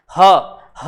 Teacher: स्वर तंत्री व्यंजन इसलिए कहा जाता है क्योंकि जब हम हा का उच्चारण कर रहे होते हैं तो हमारी स्वर तंत्रिकाओं में कंपन हो रहा होता है। ह बोलेंगे तो आपको गले में एक हल्का सा वाइब्रेशन का आभास होगा, महसूस होगा।